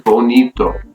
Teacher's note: so the stress is going to be on a second to last syllable